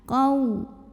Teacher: Ada wawu tasydid tapi sebelumnya bukan tanwin, bukan juga nun sukun. Maka jangan ditahan karena ini hanya dibaca nabar. Jadi bukan idgham bil gunnah ya. Cukup ditekan.